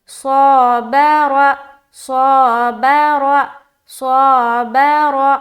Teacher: شروع میں اور آخر میں موٹا کرنا، بیچ میں باریک